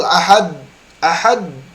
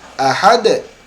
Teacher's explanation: sifatnya yaitu Qalqalah maka seharusnya ketika Ahad ada pantulan